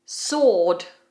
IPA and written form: sɔːd (Sword)